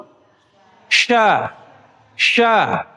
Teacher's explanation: Syin itu dibaca lebih tebal. punya sifat namanya tafasyi. Tafasyi itu menyebar, Bu.